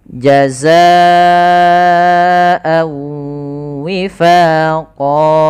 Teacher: lafal Wawa di sini A di sini ada Mad thi'i yaitu tanwinnya masuk kepada huruf wau dan kita tahan sambil dimonyongkan untuk W